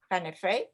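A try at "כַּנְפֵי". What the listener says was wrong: I'm still hearing a little sound with the shava. There it is.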